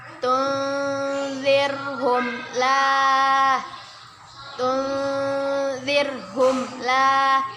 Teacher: Nun sukun bertemu dengan huruf za. Kita baca dengan samar-samar dan ditahan 2 harokat. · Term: ikhfa